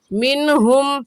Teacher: منہم کی نون ساکن پر غنہ نہیں ہوگا